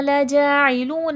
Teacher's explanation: لَجَاعِلُونَ جا میں کھڑا زبر ہے کھینچ کے پڑھا جائے گا، لو میں واو مدہ ہے، واو ساکن سے پہلے پیش ہے کھینچ کے پڑھا جائے گا